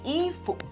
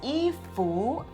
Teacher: In China, it's officially 衣 服 with a neutral tone at the second syllable, and in Taiwan, it's 衣 服, a second tone.